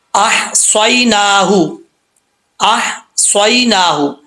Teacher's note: یہاں پہ ہا جو ہے وہ بریک ہے. اس ہا کا تعلق حلق سے ہے سینے کی طرف نہیں